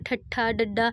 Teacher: ਤੁਸੀਂ ਇਹਨੂੰ ਬੋਲ ਕੇ ਦੇਖੋ ਤੁਹਾਡੀ ਜੀਭ ਤੁਹਾਨੂੰ ਉਲਟੀ ਹੋਈ ਮਹਿਸੂਸ ਹੁੰਦੀ ਹੋਊਗੀ